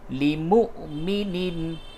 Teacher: یہ واو کے اوپر یہ حمزہ ہے، اس جگہ پہ جھٹکے کے ساتھ پڑھا جائے گا